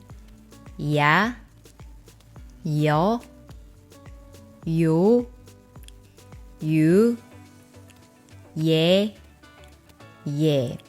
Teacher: These vowels are diphthong vowels, which means it has 2 vowel sound qualities for 1 syllable. So here, another sound is added to these simple vowels.